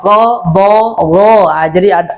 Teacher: kalau diberi harokat suaranya berubah menjadi O, berarti dia isti'la